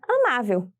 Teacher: a sílaba tônica de amável é a sílaba ma e é a penúltima sílaba da palavra e por isso ela é classificada como paroxítona outros exemplos de